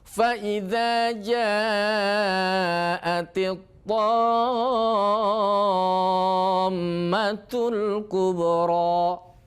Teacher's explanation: Mim yang bertasydid wajib dibaca gunnah, dengung. Jangan dibaca tammatul belum mencapai dengung, ya.